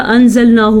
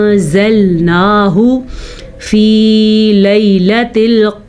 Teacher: नून साकिन के बाद ज़ा आया हुआ है, ये यहाँ पे हम इख्फा करेंगे